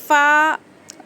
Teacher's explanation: ऊपर का जो दो दांत है वह नीचे के होठ को लगाने से फायदा होता है क जुबान की जड़ ऊपर के तालू पर